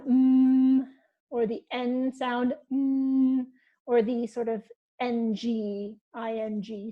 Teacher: so most of the air is actually going through the nose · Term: nasal sounds